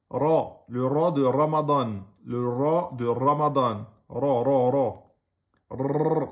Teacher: le r français mais est plutôt comme le r espagnol car il faut rouler légèrement sans exagération le bout de la langue